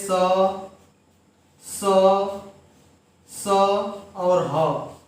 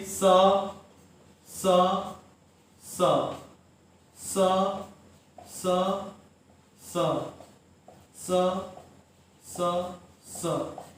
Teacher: ये बोलने पर हमारे मुख से जो है उष्मा निकलती है, गर्म वायु निकलती है बोलने पर। आप कहीं भी रहिए, इन व्यंजनों को जैसे बोलेंगे वैसे ही समझ जाएंगे कि बोलने पर क्या है, उष्मा निकल रही है, स और ह। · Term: उष्म या संघर्षी व्यंजन